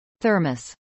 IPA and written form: ˈθɝməs (thermos)